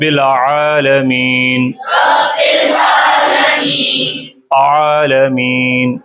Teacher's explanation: گلے کے درمیان سے آئین نکالیں گے